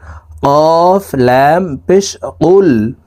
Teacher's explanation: এই কফ হরফের উচ্চারণ জিহ্বার গোড়া তার বরাবর উপরের তালুর সঙ্গে লাগাইয়া উচ্চারণ করে পড়তে হবে